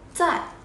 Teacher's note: Zài, đọc mạnh xuống nha. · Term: thanh 4